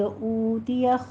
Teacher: اوتیا میں او میں ہونٹوں کو گول کیجیے اور واو مد ادا کرنا ہے، 2 کاؤنٹ کرنے ہیں